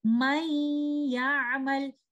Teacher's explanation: the oral part of the noon sakina will disappear, which is the tip of the tongue touching the roof of the mouth. But one of the characteristic of letter noon sakina, which is gunna, will left behind, and that gunna will be merged with these two letters when idgham of noon sakina is happening. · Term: incomplete merging